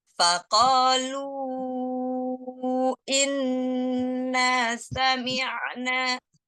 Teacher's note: Faqalu mad tabi'inya nggak boleh masuk hidung. Lu masuk ke mulut.